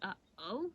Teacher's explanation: the question mark is a glottal stop so it's a break in the word